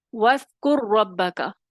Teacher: پہلے را ساکن کا دوسرے را متحرک میں ادغام ہوا ہوا ہوتا ہے